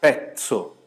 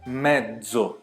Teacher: uma eu fiz com ts, a outra eu fiz com dez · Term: variante sonora